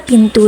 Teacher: n melambangkan n tertutup memiliki ciri hidup nasal dan apikodental